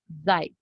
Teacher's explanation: अब जाय पे सिर्फ फोर्थ टोन है, मतलब हमें अपनी आवाज जल्दी से उसको पढ़ लेना है